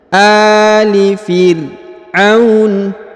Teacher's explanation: huruf a dibaca panjang 2 harokat karena terdapat alif kecil di atasnya ya